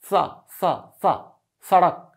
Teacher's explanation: हैं ये वाला सा ये है दंत इसे बोलते हैं दंत इसका उच्चारण तब होता है जब आपकी जीभ दांतों में लड़ती है